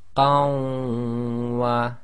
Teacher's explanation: Hold the shadda too long plus ghunna